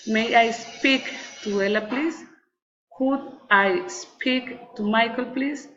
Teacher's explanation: Request with rising intonation.